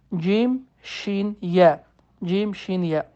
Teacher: dilin ortasından üç hərfimiz çıxar cim, şin, yə